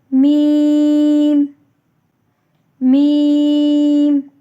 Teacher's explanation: دونوں ہونٹوں کے خشکی والے حصے آپس میں ملتے ہیں تو میم کی ادائیگی ہوتی ہے۔ میم بھی 6 حرفی لفظ ہے، اس کو بھی ہم کھینچ کر پڑھتے ہیں۔